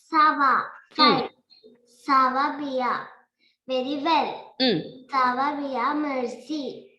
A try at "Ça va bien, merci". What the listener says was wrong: D'accord, très bien, très bien.